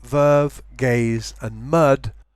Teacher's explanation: syllables for example in verve gaze and mud the voice sounds the beginning and the end of each word are slightly devoiced they lose voice they're not as voiced they're not fully voiced but between voice